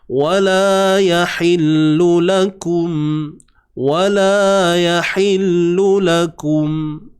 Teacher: Yahillu huruf ya baris atas 1 harakat juga. Ha pedas. Ingat tengah kerongkong disempitkan.